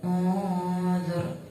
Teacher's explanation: Nun mati atau tanwin ini dibaca tebal. Bacanya satu alif atau 2 harakat. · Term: ikhfa'ala